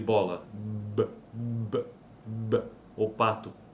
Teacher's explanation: veja que aqui o ar está sendo obstruído, nesse caso é bilabial, né, pelos lábios.